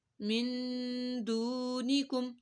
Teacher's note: نون ساکن کے بعد دال آ رہی ہے حروف اخفا میں سے ہے تو یہاں پر ہم نے گنہ کیا اور یہاں پہ دو کو بھی لمبا کیا کیونکہ واو ساکن